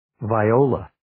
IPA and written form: vi'oulə (Viola)